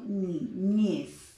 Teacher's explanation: En el caso de la palabra niñez, yo digo niñez. La última sílaba es aquella que se reconoce como sílaba tónica